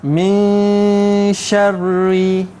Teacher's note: kadar dengung dia, adik-adik di rumah, 2 harakat